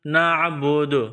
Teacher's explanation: جب وقف کریں گے، رکیں گے، تو آخر والے حرف کو سائلنٹ کریں گے، یہاں دال ہے، دال پر جب جزم کا نشان آئے گا، دال ساکن ہوگا تو دال پر قلقلہ کیا جائے گا